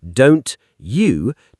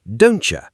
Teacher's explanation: So, the most common example, don't you, in careful speech, don't you, two clear words, but in natural speech, don'tcha. The T and Y sounds blend together into a ch sound. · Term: Assimilation, assimilation